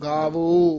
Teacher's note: ਇਹ ਗਾਵਉ ਨਹੀਂ ਕਹਿਣਾ ਗਾਵੋ ਗੂੜਾ ਖੁੱਲੇ ਮੂੰਹ ਵਾਲਾ ਬੋਲਣਾ